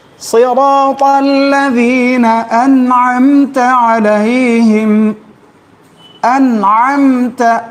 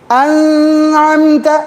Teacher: چھپائیں گے نہیں, نون کو کھینچیں گے نہیں